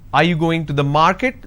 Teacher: going to the is flat are you going to the market this is going up because the last word denotes like it's a question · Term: rising tone